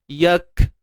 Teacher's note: Sifat hams, iaitu udara ataupun nafas yang terlepas.